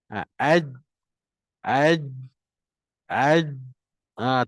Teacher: Jadi nafas dia pun tertahan, angin pun tak ada terkeluar lah. Jadi lepas ni jangan baca H, H. · Suara tertahan, maknanya tak ada bunyi yang keluar. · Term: Jim mati